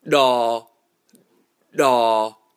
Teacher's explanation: It's not a crisp sound as opposed to the Hmong D. The Hmong D also has the additional aspect of being pre-glottalized.